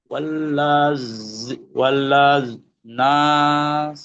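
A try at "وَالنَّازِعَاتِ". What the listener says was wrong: ও লা নাই, লা কাটা, আলিফ কাটা। বলেন।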